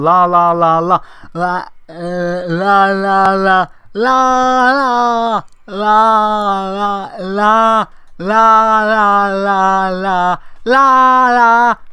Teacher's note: the law sound involves your tongue running against like the top of your teeth